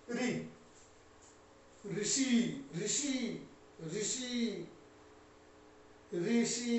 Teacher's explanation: तालु से और ऊपर सबसे टॉप में जीभ का स्पर्श होता है, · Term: मूर्धन्य